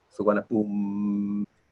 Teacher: these short I and U are sometimes not, or usually not pronounced at the end of the word, like suwana boom.